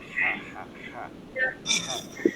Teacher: হাটাকে গলার মধ্যে ফিস ফিস করে নেয়া, বাতাস বসবে